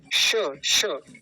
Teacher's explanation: श, तालु से इसका उच्चारण होता है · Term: तालव्य शकार